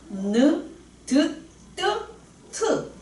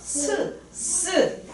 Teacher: 윗 잇몸과 혀 끝. 혀 바닥이 아니라 이 혀 끝이 윗 잇몸을 이렇게 건드려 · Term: 잇몸 소리